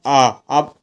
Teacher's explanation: आप आ बोल के देखें ना तो आपको लगेगा कि आ जो है जीभ के मध्य भाग से बोला जा रहा है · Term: मध्य स्वर